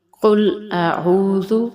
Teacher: قاف ہے، ہم اسے موٹا کریں گے